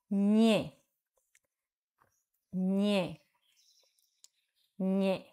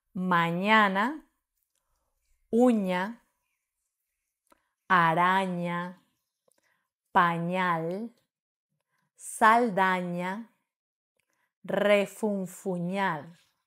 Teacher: es nasal porque dejamos salir el aire por la nariz y palatal porque apoyamos casi toda la lengua en el paladar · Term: nasal palatal